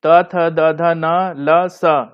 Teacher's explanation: ये दांत और जीभ से उच्चारण इसका होता है इन वर्णों का, तो ये दंत श्रेणी है।